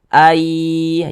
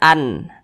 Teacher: yang dimasukkan itu adalah bunyi nun sukun ini dimasukkan ke huruf ya ini kita baca Ai Jangan dibaca an tapi kita baca Ai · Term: idgham bhunnah